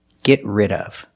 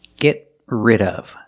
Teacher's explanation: We see the T in get is a stop T.